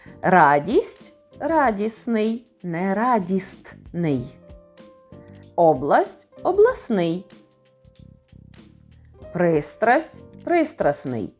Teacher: спрощення відбувається в таких групах стн спрощується на СН здн на зн ждн на жн стл на сл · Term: спрощення у групах приголосних